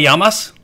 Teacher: Remember that the two L's make a Y sound rather than an L sound, so not llamas, but llamas.